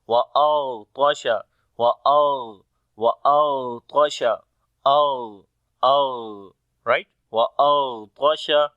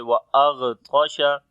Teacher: Ghain and Taw we read in heavy sound due to isti'la letters, and on the Ghain we make rakhawa quality, like the continuation of our sound